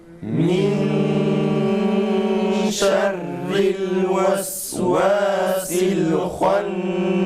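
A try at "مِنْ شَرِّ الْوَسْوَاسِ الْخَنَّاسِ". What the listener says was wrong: Yalnız vavlar min şerril vesvasil şeklinde okunmaması gerekir.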